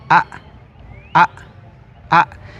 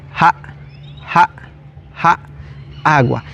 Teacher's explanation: se le conoce como vocal glotalizada, es decir, vamos a cortarle el sonido a la a. En este caso quedaría a a.